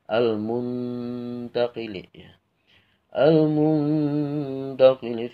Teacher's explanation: ikhfa aqrab ini bacaan suaranya itu seperti suara izhar tapi dilamain